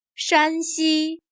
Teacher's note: Here shan has a high, level tone